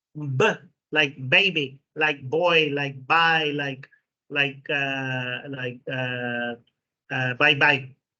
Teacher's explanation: We have the b sound where both of your lips touch.